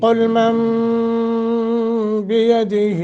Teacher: نون ساکن کے بعد جب با آ جائے تو اس نون کو میم سے بدل کر پڑھتے ہیں، من بیدہ کر کے غنہ بھی کریں گے. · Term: اقلاب